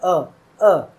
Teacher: मध्य स्वर में अ जीभ का मध्य हिस्सा लगता है।